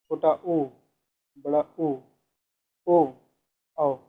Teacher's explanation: वृत्तमुखी ओठ गोलाकार अवस्था में होते हैं।